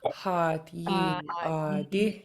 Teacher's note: So you're gonna have long and low vowel with the double A, long and low vowel with the double E, long and low double A, and the only high tone in this is at the end. It's a short high I.